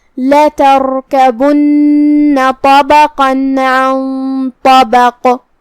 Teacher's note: عن طبق، کلمت طبق میں یہاں بھی ہم حرف القاف پہ رکیں گے، تو اس پہ جزم سے رکیں گے، تو ہمیں قاف کو ہلاتے ہوئے یہ کلمہ کو ادا کرنا ہے